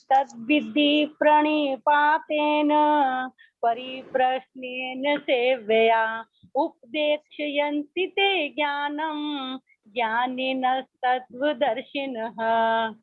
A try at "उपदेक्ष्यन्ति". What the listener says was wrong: जहाँ पर बोला उपदेक्षयन्ति, क्ष हमारा आधा है, उपदेक्षयन्ति, क्ष की आवाज कम हो।